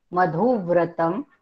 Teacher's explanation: विजृंभणा विजृंभणा मधुव्रतम. आपण पुन्हा धूवर थोडा आघात दिला कारण पुढे व्र हे जोडाक्षर आहे.